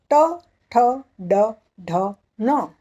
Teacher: जिह्वा का जो मूल है वहाँ से उच्चार करते हैं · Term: मूर्धन्य